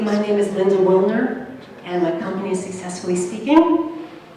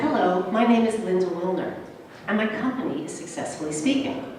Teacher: letting your voice go up at the end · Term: Uptalk